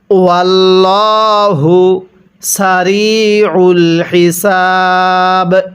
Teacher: আল্লাহ শব্দের পূর্বে যদি এরকম জবর অথবা পেশ থাকে তাহলে এই আল্লাহ শব্দটাকে আল্লাহ অর্থাৎ মোটা করে পড়তে হয়